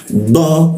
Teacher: D itu lidah bertemu graham.